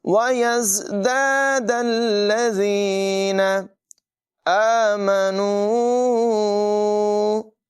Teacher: مد منفصل ہے، اسے 2-3 سیکنڈ تک لمبا کریں گے